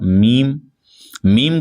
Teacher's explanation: मीम को जब हम अदा करेंगे तो हमारे हंठ के थोड़ा सा बाहर वाले हिस्से से आपस में मिलते हुए नजर आएंगे